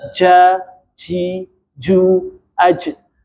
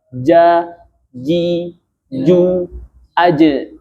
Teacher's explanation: ja itu punya sifat yang namanya jahr. Jelas. Jadi bukan hames. · ja itu makhrajnya adalah sama seperti sya kemarin, tengah lidah menyentuh langit-langit atas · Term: jahar